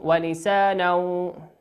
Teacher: تنوين أتى بعده حرف الواو، والواو من حروف الإدغام بغنة، يغن بمقدار حركتين